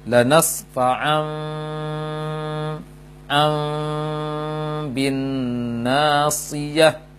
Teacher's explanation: Iqlab adalah menjadikan posisi atau menjadikan bunyi nun menjadi mim dengan tetap menjaga dengungnya selama kadar dengung 2 harokat